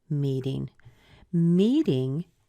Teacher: Meeting has the meet at the beginning, so this is where you hear the stress. It has that long E sound. But the thing I want you to notice is the T in front of the ing.